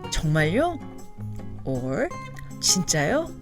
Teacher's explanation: both 정말요 and 진짜요 can be used to mean are you sure? with the rising intonation